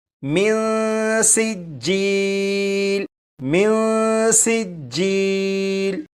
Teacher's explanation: اب ان دونوں الفاظ کو پڑھیں گے اور یہاں پر دیکھیں نون ساکن ہے، نون ساکن کے بعد سین حروف اخفا میں سے ہے، لہٰذا یہاں پر نون ساکن میں اخفا ہوگا یعنی غنہ کر کے پڑھیں گے